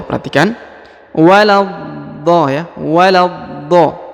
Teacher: Setelah ditahan dan ditekan lalu dipanjangkan, perhatikan, 6 harokat